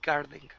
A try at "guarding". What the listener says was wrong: Watch your tongue there. Push your tongue down on the R. Push it down all the way through until you get to the D. There can only be one D sound here.